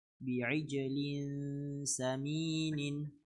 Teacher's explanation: تنوين بالكسر مخفى عند السين المفتوحة بغن حركتين